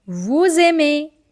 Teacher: Again, first word ending with silent letter, second word starting with vowel. So they both will connect and the sound will become z.